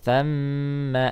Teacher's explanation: mim bertasydid ya jadi ghunna musyaddadah